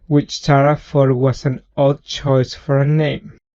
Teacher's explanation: he substituted an F for the first th and then that last sound the T turned into an L